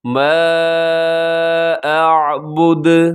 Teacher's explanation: آخر میں دال وقف کی وجہ سے ساکن ہوگا تو دال قلقلہ ہوگا